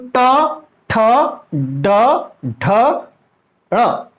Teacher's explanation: देखिए हमारी जो जिह्वा है वो हमारे मूर्धा में टच हो रही है